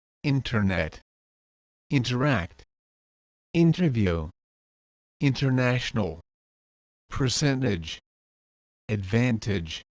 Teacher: if n is before the T then the T goes silent